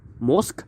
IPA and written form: mosk (mock)